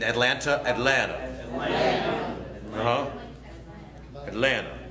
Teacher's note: Cut that last T.